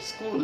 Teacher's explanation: আমরা দেখব যে স্কুল শব্দটি একটি ইংরেজি শব্দ, স্কুল, এবং এখানে বাংলায় সেটি উচ্চারণ করতে গেলে দন্ত স এবং ক এর একটি যুক্ত উচ্চারণ আছে